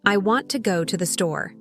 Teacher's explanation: the words want, go, and store are stressed more than the small words.